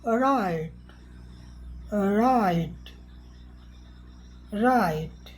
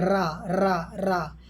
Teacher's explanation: पहली स्थिति में हवा आसानी से निकली है और दूसरी स्थिति में जीभ की नोक थरथराई है।